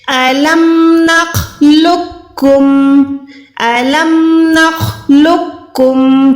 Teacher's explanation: قوف موٹا نہیں پڑھ رہی، میں کاف کو باریک کر رہی ہوں